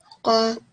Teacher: The qaf really came from the back of the throat.